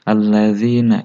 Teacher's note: Bacanya boleh 2, 4 sampai 5, 6 harokat. Alladzina, za harus dibedakan dengan dal karena ini dibacanya agak sedikit pecah, tidak bulat seperti dal